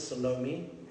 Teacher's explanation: The classical pronunciation would be Salome, but in South Africa we tend to stomp all the vowels quite flat